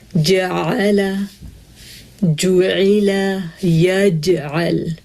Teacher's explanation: زبان کا بیچ والا حصہ تالو سے بالکل چپک گیا ہے، جبکہ شین میں زبان اور تالو کے درمیان تھوڑا سا گیپ ہے، اور یا میں دیکھیں یہ گیپ تھوڑا سا اور بڑھ گیا ہے۔ · جیم میں قلقلہ بھی ہے تو زبان بالکل تالو سے چپک جائے گی، اس میں بالکل گیپ نہیں ہوگا۔